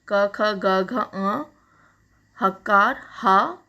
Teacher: इनका उच्चारण स्थान क्या है? कंठ है। ये कंठ से बोले जाते हैं।